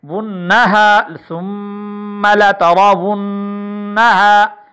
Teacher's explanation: ونہ کی نون پر بھی غنہ ہو رہا ہے